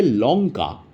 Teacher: তখন দেখবে জীবটা একেবারে পিছনের দিকে ঠেকছে মানে ভিতরের দিকে ঠেকছে। লঙ্কা ল যখন বলছো লঙ্কা বলে দেখবে নিজে মনে মনে যে তখন জীবটা দেখবে পিছনের দিকে ঠেকছে